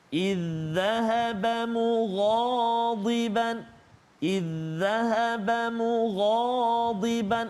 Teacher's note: Idzahaba mughadiban. Ada 2, ada huruf ghain dan juga ada huruf dad. Kita tebalkan.